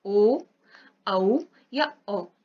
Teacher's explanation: जैसे हम बोले ओ, औ या ओ, तो ओ हमने जब बोला तो हमारी कंठ से आवाज निकली और हमारा जो होंठ है, ओष्ठ जो है, उसकी स्थिति में चेंज हुआ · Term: ओष्ठ प्लस कंठ